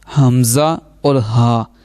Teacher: ہا یہ جو دو آنکھوں والا ہا جسے ہم کہہ دیتے ہیں نا، وہ ہے حمزہ اور ہا حلق کے نیچے والے حصے سے ادا ہوں گے